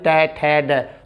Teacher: जीभ ऊपर टकराइए, टै ठै डै, तो ऊपर जो छत होती है उसे मूर्धा कहते हैं, तो मूर्धन्य